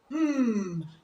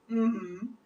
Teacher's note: this is a nasal sound you use your outer and lower lips to articulate this sound